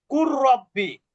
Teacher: লামের পরে যদি র আসে, তাহলে লামটা না পড়ে রটাকে কি করতে হয়? ডাবল করতে হয়, তাজদিদ দিয়ে ডাবল করতে হয়। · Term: ইদগামে মুতাকারিবাইন